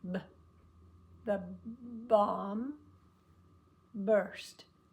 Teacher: your lips close at the beginning and you hum just like on an M but right after you start it pops open